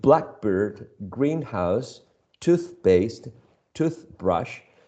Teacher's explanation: all these compound nouns, nouns made up of two elements, right, are stressed on the first syllable. It doesn't depend on the context.